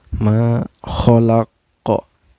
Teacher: Ka ini dihukumi qalqalah kubro. Artinya qalqalah ini memantul ya. Ada pantulan